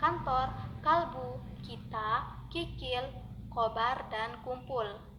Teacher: menempatkan pangkal lidah pada langit-langit lunak, lalu udara diletupkan dengan tiba-tiba sehingga pangkal lidah terlepas dari langit-langit lunak itu. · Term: konsonan K